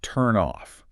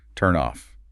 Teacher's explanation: Your vocal cords never stop buzzing.